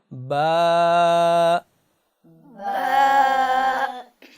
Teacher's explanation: الف کی ادائیگی میں ہماری نہ تو زبان انوالو ہو رہی ہے، نہ ہی شفتین کوئی اس میں انوالو ہو رہے ہیں، اور صرف حلق سے آواز آ رہی ہے